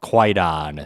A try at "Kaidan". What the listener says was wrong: I'd like to point out that spelling, Kwaidan, Kwaidan, that's a weird historical thing, but it's actually pronounced Kaidan.